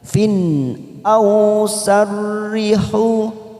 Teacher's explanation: Fin kita baca jelas karena kasrotain bertemu dengan hamzah, tanwin bertemu dengan hamzah, namanya idhar halki.